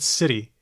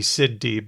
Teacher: it's not a duh where you're sitting on it it's a tap